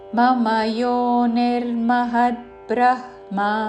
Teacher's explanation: బ్రహ్మ ముందు హ పలికి తర్వాత మ